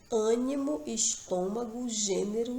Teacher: Nessas palavras, observe que a pronúncia, a vogal, ela apresenta uma sonoridade fechada, diferente, do agudo, onde a sonoridade é aberta.